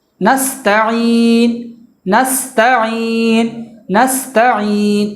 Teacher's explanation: اور تا پہ جو زبر، اس زبر کو بھول کے بھی نہیں بڑھانا ہے. نستعین نہیں پڑھنا ہے.